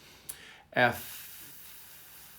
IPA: f